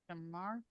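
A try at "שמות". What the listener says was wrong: No, it's an O sound, like right here. Shemot. Shemot.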